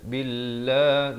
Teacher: lafaz jalalah dibaca nipis dua harakat